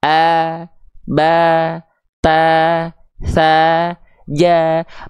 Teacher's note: huruf tipis pangkal lidahnya datar sehingga ketika vokal a mau keluar enggak Kehalangin jalurnya sama pangkal lidah tapi kan pangkal lidahnya di bawah sehingga vokal a mau keluar